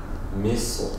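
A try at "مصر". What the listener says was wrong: Nein, Saad bleibt dunkel. Misr. Nochmal dunkel. Misr. Misr.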